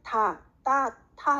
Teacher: 혀가 치조에 붙었다가 팍 떨어지죠. 팍 떨어지고 팍 떨어지거든요. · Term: 파열음